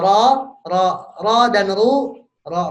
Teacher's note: ro dan ru tebal karena pangkal lidahnya naik ke atas